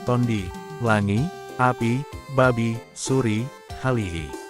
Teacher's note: diftong UI akan berbunyi i